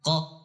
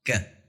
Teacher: قاف موٹا پڑھا جاتا ہے اور کاف باریک پڑھا جاتا ہے